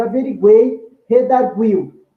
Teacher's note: Eu pronuncio todas as vogais, o ei, o iu. Isso é um sinal que é um tritongo.